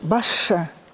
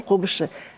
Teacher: вы берете слово «басше», мы пишем «басше», а говорим «баше».